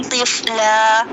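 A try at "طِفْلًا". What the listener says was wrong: तिफ़ला नहीं पढ़ना। तिफ़ला तिफ़ती नहीं पढ़ना ना, इसको ती नहीं है ये। तफ़ख़ीम का कौन सा दर्जा यहाँ पे? आखिरी नंबर।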